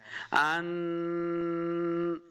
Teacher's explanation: کا قاعدہ ہے، یہاں پہ ہم نے غنہ کرنا ہے ان، یہ جو میں ناک میں آواز لے کے جاتا ہوں اسی کو غنہ کہتے ہیں ، اسی کو اخفاء کہتے ہیں، تو ایسے کر کے پڑھنا